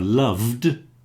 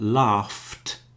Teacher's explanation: we have a loved with a d, but laughed with a t